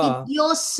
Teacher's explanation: अत्र विसर्गस्य सकार भवति